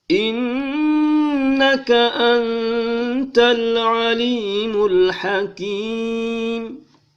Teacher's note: nun mati ketemu dengan ta, dia berdengung dua harkat. Antal, tidak boleh dibaca anta.